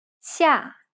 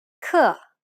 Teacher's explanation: It sounds like a fast, sharp drop. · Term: falling tone